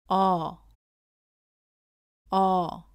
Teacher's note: 어를 발음할 때는 아보다 입을 살짝 다물고 입은 내밀지 않고 발음합니다.